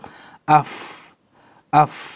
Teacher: Batn ini perut perut bibir yang di bawah sini ya, batnu asyafa as-sufla ya, jadi pertengahan bibir yang di bawah, ma'a atrof as-sanaya al-ulya, dan ujung gigi seri atas. Jadi bibir bawah nempel dengan ujung gigi seri atas ya.